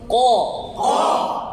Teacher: কফের মাখরাজ আকসাল লিসান জিহবার গোড়া জিহবার গোড়াকে উপরে তুলতে হবে আওয়াজের গতি উপরে ক আরো মোটা করে আরো মোটা ইস্তিয়াইলা ক